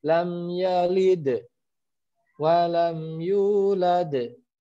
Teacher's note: Nah, dalnya menjadi berat kan, walaupun dia ada di tengah-tengah ayat seperti itu. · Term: qalqalah kubro